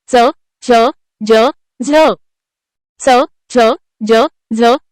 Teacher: या वर्णांचा उच्चार करताना जिभेचा स्पर्श दंत व तालू या दोन्ही अवयवांना होतो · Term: दंततालव्य वर्णांचा